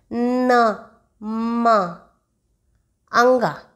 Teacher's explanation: nasal sounds जो होते हैं, नाक से हवा निकलती है तभी होता है